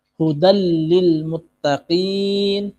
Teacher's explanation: tanwin fathatain bertemu dengan lam. Ini namanya idgham bila gunnah. Memasukkan huruf lam tanpa diikuti dengan dengung.